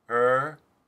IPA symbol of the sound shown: ɚ